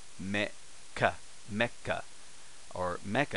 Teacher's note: Then, in fact, I should say this is that once I taught the su, is that same rule applies in katakana as in hiragana. The small su becomes a glottal stop. So this right here would be me, small glottal stop or a small pause.